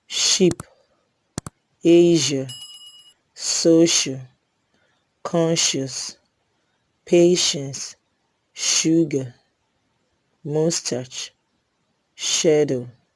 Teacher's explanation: There is the Palato alveolar fricatives, sh and sh. Sh is a voiceless palato alveolar fricative